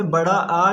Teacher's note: विवृत की बात करें जिसमें लगभग मुंह पूरा खुला रहता है